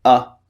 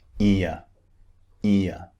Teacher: we have a short one and another one which is two vowels pushed together